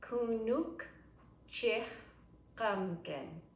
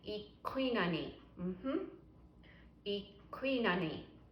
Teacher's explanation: Q is at the very back in your throat.